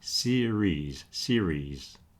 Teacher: you don't pronounce the I and the E separately. Just say series. · You got that soft R in the middle. Don't do the hard Spanish R, okay? And you don't pronounce the I and the E separately.